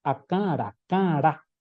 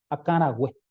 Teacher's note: De la nasalidad tiene que bajar a la oralidad rápidamente.